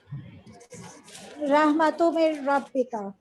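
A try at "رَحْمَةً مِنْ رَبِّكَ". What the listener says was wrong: رحمتو ہے، دیکھیں ذرا کیا لکھا ہے. رحمتم من ربک، زبر ہے یہ دو.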